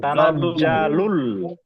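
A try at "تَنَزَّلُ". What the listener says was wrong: জা টান দেবেন না, তানাজ্জালুল।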